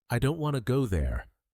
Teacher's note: the important words don't and go. These are said with stress with a stronger voice. The smaller words like I to and there are said more softly and more quickly.